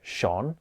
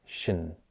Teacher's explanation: I wouldn't normally say sha with rounded lips I would say Shin with neutral lips and a very short sound